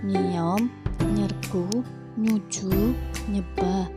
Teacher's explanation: N nasal alveolar pada kata tanang, lesan, nangis, nanam. Dengan nye nasal palatal pada kata nyiom, nyergu, nyuju, nyebah.